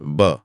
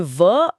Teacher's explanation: इसे बोलते समय नीचे का होठ ऊपर के दांतों के बहुत करीब आता है लेकिन उन्हें पूरी तरह सील नहीं करता।